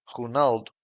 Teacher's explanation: Ronaldo in Portuguese sounds Ronaldo. The stressed syllable is in nal and both O's are shut.